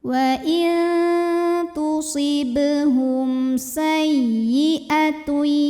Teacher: Karena mim sukun menghadapi huruf selain mim dan ba, yaitu huruf sin, maka mim sukun dibunyikan dengan jelas. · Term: izhar syafawi